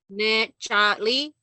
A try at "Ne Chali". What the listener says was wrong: Ne Chali. There's no glottal stop by the L. So it's Ne Chali. Ne Chali. Ali.